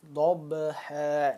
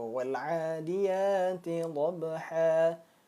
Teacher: Qalqalah yang berada di tengah kalimat atau di tengah ayat. Qalqalah yang pantulannya kecil. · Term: Qalqalah sughra